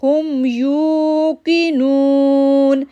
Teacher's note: یو کو 2 second کے لیے کھینچا، نو کو 2 سیکنڈ کے لیے کھینچا